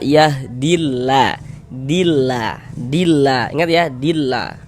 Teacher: lafaz Allah huruf lam jalalahnya itu dibaca tarkik dibaca tipis